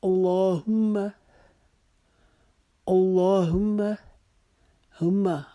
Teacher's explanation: ہا کی 2 آنکھ والی ہا کی آواز حلق کے نیچے والی حصے سے نکالیں گے · ہا کی آواز حلق کے نیچے والی حصے سے نکالیں گے، میم مشدد کے اوپر ایک الف کے مطابق ہم غنہ کریں گے، اس کو ہما نہیں پڑھیں گے